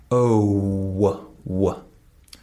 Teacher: in the sound O, like go, notice that there's a W sound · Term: glide sound